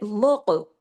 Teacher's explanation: جہاں سے آواز کا اخراج ہوتا ہے گلے میں، وہاں آواز کو ہلا دیتے ہیں، یعنی جما کے نہیں پڑھتے، ہلا کے پڑھتے ہیں۔ اس کو کہتے ہیں قلقلہ۔